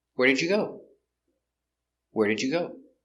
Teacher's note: for information questions the intonation goes down at the end